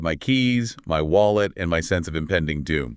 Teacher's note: The secret is the microscopic pause right before the third item. That fraction of a second of silence builds the tension.